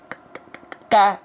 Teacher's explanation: Kaf itu enggak boleh mengalir nafas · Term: hams